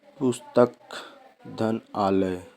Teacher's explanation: पुस्तक शब्द में जो अंतिम क में मिला हुआ आ है जो ह्रस्व है तथा आलय का जो दीर्घ आ है, इन दोनों के मिलान होने पर दीर्घ आ हुआ और संधि कर देने पर, जोड़ करने पर शब्द बना पुस्तक धन आलय। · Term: दीर्घ संधि